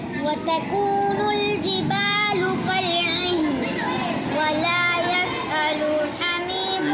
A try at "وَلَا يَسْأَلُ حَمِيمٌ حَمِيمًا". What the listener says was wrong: لو کو پھر کھینچے، ولا يسأل حميم حميما، لو کو آپ کھینچے۔